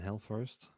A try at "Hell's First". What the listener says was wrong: Hell's First, yeah. Plural on the Hells.